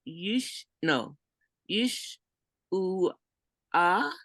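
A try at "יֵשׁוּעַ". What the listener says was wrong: Yeshua. Because your shin and your u make, when you see a vowel next to a letter, they go together like that. So it's Yeshua.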